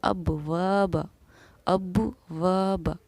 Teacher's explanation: با پر ہمارا جزم سکون ہے، تو یہاں پر ہم نے با پر قلقلہ کیا